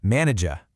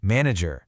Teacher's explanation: In the UK pronunciation, that final R sound often gets softened or it might even disappear entirely. It sounds more like manager. · It sounds more like manager. But in the US version, that final R is much stronger.